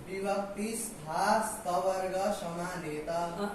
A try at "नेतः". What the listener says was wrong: नेतः, विसर्ग नहीं बोल रहे हो? नेतः।